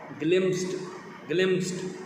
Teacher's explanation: For example, have you ever had to से a word like ग्लिम्स्ड, ग्लिम्स्ड, प सा, पी और सी S का साउंड है प सा, और ये इकट्ठे हैं, ग्लिम्स्ड, ग्लिम्स्ड। There are 4 consonants in a row at the end of this word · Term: कॉम्बिनेशन ऑफ टू साउंड्स